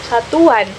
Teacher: Di saat kita bilang u itu dengan a-nya itu seperti ada w di tengah-tengahnya gitu, satuan. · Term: bunyi pelancar w